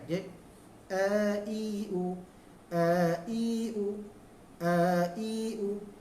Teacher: dia bunyi bawah baris i, bukan e, bukan e, dia i, depan bunyi u, depan bukan o.